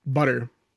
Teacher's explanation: So there's no glottal sound in butter in American English.